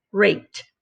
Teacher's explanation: the k is an unvoiced, so the ed makes the t sound.